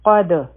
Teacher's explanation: قاف غټ حرف دی، په دال باندې سکون دی، قلقله به کوو، آواز به واپس راشي